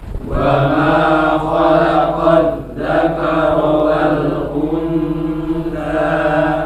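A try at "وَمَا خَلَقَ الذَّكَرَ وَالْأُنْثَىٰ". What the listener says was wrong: Nanti ini ada pelajaran ikhfa ya. Nun sukun bertemu tha itu bukan untha tapi siap-siap ke tha ya. Untha.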